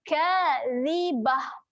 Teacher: Pastikan huruf zal kita jelirkan lidah. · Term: jelir lidah